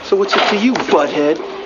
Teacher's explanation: The H and T sounds in what are dropped. And there's no break between the S of is and I of it.